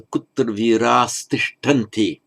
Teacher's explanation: Note here the plural, the virah. And by sandhi, the ah before the t becomes an as.